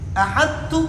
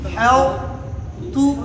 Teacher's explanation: یعنی طا کو ہم مکمل طور پر تا میں مدغم نہ کریں۔ احدتو اس طرح نہ پڑھیں بلکہ کس طرح پڑھیں گے؟ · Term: ادغام ناقص